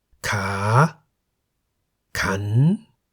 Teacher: A live syllable beginning with a high class consonant is in the rising tone.